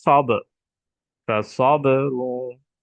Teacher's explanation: এখানে সদ যখন উচ্চারণ করি তখন আমাদের শীষ ধ্বনি উচ্চারিত হয়, যেমন সব, ফাসাবরুন, অর্থাৎ সদ হরফে শীষ ধ্বনি রয়েছে।